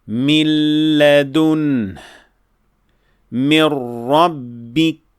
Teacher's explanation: another type of full idgham which is without ghunnah, and it occurs when nun sakina is followed by the letter lam or the letter ra, like min ladun min rabbik. · This shaddah is actually telling you that the letter nun is fully and completely dropped or not pronounced at all because of idgham